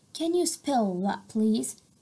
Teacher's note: we have stress on spell and please